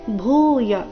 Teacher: ಭೂ ಮಹಾಪ್ರಾಣ ದೀರ್ಘ ಬರಬೇಕು